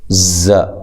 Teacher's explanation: زا کو زور سے سیٹی کے ساتھ، ز، ٹھیک ہے، نو و مدہ ہے، وقف کی صورت میں مد کر سکتے ہیں، نون، ٹھیک ہے۔